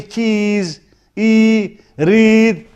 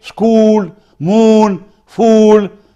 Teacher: when I say cheese, read, my lips are spread